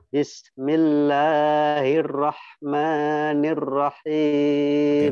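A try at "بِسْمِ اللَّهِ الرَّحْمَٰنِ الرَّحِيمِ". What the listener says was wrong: Hati-hati, masih kepanjangan. Bismillahirrahmanirrahim.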